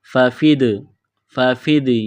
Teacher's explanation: دال ساکن ہے، دال پر قلقلہ کریں گے